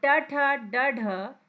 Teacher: यह आपके मुर्धा से बोले जाते हैं